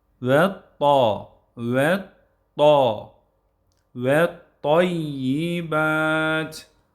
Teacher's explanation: Buradaki ta harfini de kalın ve eee patlatarak